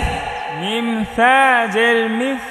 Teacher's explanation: সা নরম করে পড়তে হবে জিহ্বার আগা দাঁতের আগা